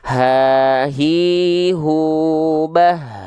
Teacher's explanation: H besar dilafalkan dari pangkal tenggorokan yang keluar biasa nafasnya